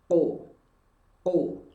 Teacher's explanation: Lalu bunyi qaf sukun. Karena qaf memiliki sifat qalqalah, berarti ada bunyi pantulan.